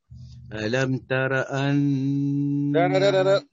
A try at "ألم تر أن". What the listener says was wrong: فخم الراء ألم تر أنا ألم تر أن فخم الراء نعم.